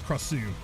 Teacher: The emphasis on the second syllable.